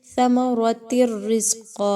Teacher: را جو ہے وہ حروف یرملون میں سے ہے، ادغام وداؤٹ غنہ کیا جائے گا یہاں پہ